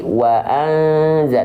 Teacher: jadi kalau kita baca Waza tuh jadi bunyiannya enggak Nempel Lagi lidah kita enggak Nempel Lagi ke langit-langit waan enggak ya gitu waan anza tapi jadi Waza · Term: samar dan dengung